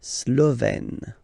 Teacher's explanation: Remember, E accent grave, you open it